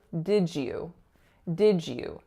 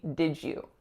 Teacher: the final D in did is becoming palatalized. So instead of being produced here at the alveolar ridge as it usually is, it moved back to the palate because that's where the y sound in you is going to be produced.